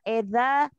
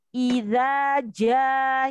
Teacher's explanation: sempurnakan harokat kasrohnya tidak miring atau imalah. Bukan e tetapi i.